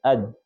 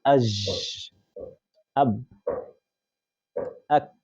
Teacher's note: the air coming out is being obstructed, it's not freely pronounced, and then a sudden release of such air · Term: plosive letters